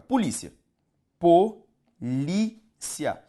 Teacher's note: Palavra paroxítona também. Só que veja para mim que é uma paroxítona, olha só, terminada em ditongo. Ou seja, essa aqui encaixa-se na regra de número 3.